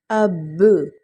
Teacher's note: حمزہ با زبر اب، با زبر با، اب، اور وقف کی صورت میں ہم قلقلہ کا حرف ہے تو اس پر جھٹکا دیتے ہوئے وقف کریں گے